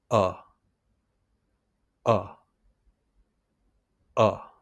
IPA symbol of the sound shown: ʌ